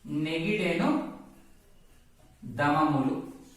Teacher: పరుషాక్షరం స్థానంలో సరళాక్షరం వచ్చి చేరుతుంది అనేది ఈ సూత్రం యొక్క అర్థము.